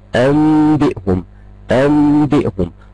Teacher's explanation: حاجي على النون دي اقلبها ميم مش هنطق نون خالص لا ده انا هقلبها ميم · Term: الاقلاب